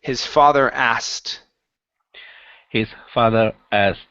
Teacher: okay so don't worry about the K in this word um drop the K and go straight to a t sound